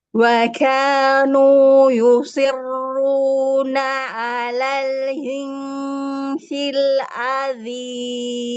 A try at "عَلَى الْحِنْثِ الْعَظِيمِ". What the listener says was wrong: Sekarang ini udah kebuka. A-nya sudah kebuka. La-nya itu loh jadi lel. La. Alal. L-A-L. Jadi mulutmu itu sukanya kayak gini, kayak ditahan. Nah, jadi akhirnya jadi bukan A tapi jadi Itu gimana ya bacanya? La-nya bukan la tapi le.